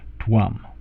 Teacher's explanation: It's actually a softer V. It's more like a W in English word. So the Sanskrit pronunciation of a standard V like this, which is always used in Sanskrit print, or in books where they are representing Sanskrit text, that is always a W.